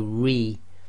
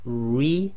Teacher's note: the ra will always be tarqiq, except for we've got 3 exceptions coming up on the next slide. So if the ra carries a kasra, it's going to be light, tarqiq, and the easy way to remember this is when you say this ra, make a big smile, so you're going to go re.